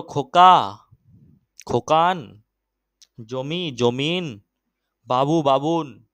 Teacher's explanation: শব্দের শেষে অতিরিক্ত ব্যঞ্জনের আগমন ঘটে গেছে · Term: অন্ত ব্যঞ্জনাগম